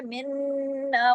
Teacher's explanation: نون پہ تشدید ہے، منا غنہ ہوگا